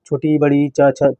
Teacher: तालू से इनका उच्चारण होता है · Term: तालव्य